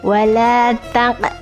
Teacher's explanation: Nah, di sini ada qaf yang disukunkan, maka hukum bacaannya adalah qalqalah.